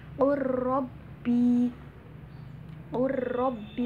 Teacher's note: Cara membacanya itu diidghamkan tanpa dengung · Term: Idgham mutaqoribain